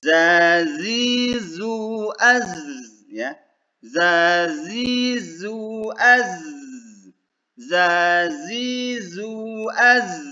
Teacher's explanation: desis pada zai menyerupai suara lebah